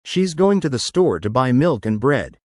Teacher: The rise on milk should be a little more pronounced, and the fall on bread needs to be a bit more definitive. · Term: wave-like intonation